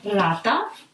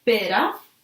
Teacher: R has two pronunciations. When you will find it in front of the word at the beginning, rata, a rat, is pretty strong, rata. But when you will find it between two vowels, pera, is pretty soft, pera.